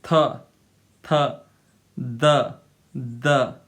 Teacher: in English, tip of tongue is touching between the upper and lower teeth